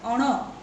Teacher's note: તો એ બધા નાસિકો છે, અનુનાસિકો છે. એમાં પણ જ્યારે આપણે અણ બોલીએ છીએ તો ફરીથી જીભને એક થડકો લાગે છે, માટે એ થડકારવાળો અનુનાસિક છે, જુઓ.